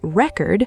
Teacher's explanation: stress on the second syllable, and it becomes a verb, the act of recording something · stress on the first syllable, and it becomes a noun